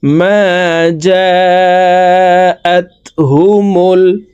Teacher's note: মিম আলিফ জবর মা, জিম আলিফ জবর জা, চার আলিফ টান হবে, কারণ মদের হরফের উপরে মোটা চিহ্ন বামে হামজা, মধ্যে মুত্তাসিল চার আলিফ টানিয়া পড়িতে হয়। মা জা, হামজা তা জবর আত, হা পেশ হু, মিম লাম পেশ মুল।